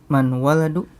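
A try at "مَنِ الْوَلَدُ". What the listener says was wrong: Ya, man al waladu, ada alnya. Nah, kalau dibaca sambung menjadi Iya, manil waladu. Lihat, sukun ketemu sukun. Sukun yang pertama huruf apa? Nun. Nah, karena dia bukan huruf mim, maka dibacanya kasroh, bukan manul ya.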